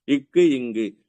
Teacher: அதாவது தொண்டை கிட்ட தொடும். இக்கு இங்கு உங்க நாக்கோட அடிப்பகுதி, அதாவது அந்த உள்ளக்கிற நாக்கு தான் மேல போய் தொடும்.